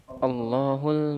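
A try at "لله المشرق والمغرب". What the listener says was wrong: itu bukan pakai alif lam, nggak ada alifnya. Ayo. Allah kemasukan lam, huruf jar lam.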